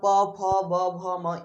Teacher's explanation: प वर्ग का जो उच्चारण स्थान होता है वह होता है ओठ। ये जो आपका ओठ दिख रहे हैं ना, यही होता है हम लोग का प वर्ग का उच्चारण स्थान।